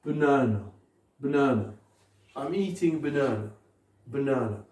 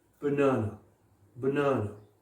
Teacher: Est-ce que vous entendez la deuxième syllabe accentuée?